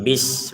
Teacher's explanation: Kata bismillah ini huruf sinnya jangan sampai kita pantulkan. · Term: pantulan